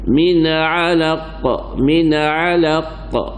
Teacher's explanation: Khalaq mendetaknya agak lambat sedikit kerana qalqalah kubra